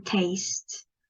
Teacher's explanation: That is a closing diphthong, which we can see from that. The second vowel in this diphthong is closer than the first one.